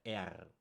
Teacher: in Germany, we say the R more like R, like a rolling R, R. So, and I was always aware of that problem that I can't really say it good in English, the English R.